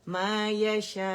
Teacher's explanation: حمزہ جو ہے وہ الجوف سے ادا نہیں ہوگا، صرف مد الجوف سے ادا ہوگی. ٹھیک ہے، حمزہ جو ہے اقص الحلق سے ادا ہو رہا ہے